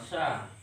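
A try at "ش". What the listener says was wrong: Sha, sha, bukan sia, ya. Sia itu akun itu. Ya, kalau sha itu harus sha, ya.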